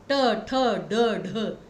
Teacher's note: तालव्य मतलब जो आपका बोलते वक्त जीभ सीधी रहती है और ऊपर के भाग को टच करती है। मूर्धन्य में क्या होता है, आपकी जीभ जो है वो मुड़ जाती है